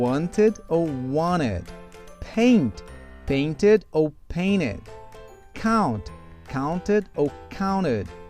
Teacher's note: eu posso simplesmente eliminar o som do T